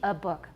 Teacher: short and it's a schwa